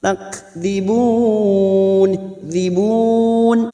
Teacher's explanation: Kaf sukun Hames harus nampak sifat hamesnya dari huruf Kaf takdibun diibun Mad bertemu dengan huruf hidub dan dibaca wakaf Mad